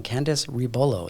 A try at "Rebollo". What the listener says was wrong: Rebollo. Yes, you got to roll the R, it's rebollo.